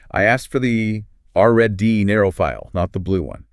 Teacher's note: The voice pitch rises, usually on the key stress word, and then drops quite quickly and steeply. · That sharp rise and fall in the word RED puts a spotlight on it, emphasizing the contrast with blue. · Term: rise-fall